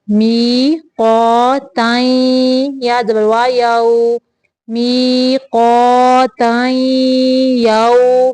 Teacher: تنوین کی بھی آواز ناک میں لے کے جانی ہے